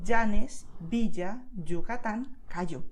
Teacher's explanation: in Castilian Spanish, the tendency is to make a sound which is dʒ like jeans